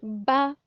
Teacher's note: اب آپ با کو جب ادا کریں گے تو آپ کو واضح محسوس ہوگا، آپ کے دونوں ہونٹ مل کر کھلیں گے، جدا ہوں گے، با۔ نمبر 2 میم۔